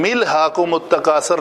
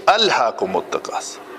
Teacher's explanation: اس حمزے کو ہم ملا نہیں سکتے، یہ کاٹنے والا ہے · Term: حمزہ قطعی